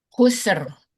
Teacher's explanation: Jangan terlalu panjang S-nya.